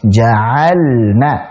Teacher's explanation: saat lam sukun ketemu dengan nun pada fi'il seperti ini dibaca dengan jelas